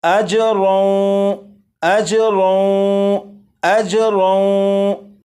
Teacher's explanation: تنوین کو واو میں ادغام کریں گے اور اس طرح پڑھا جائے گا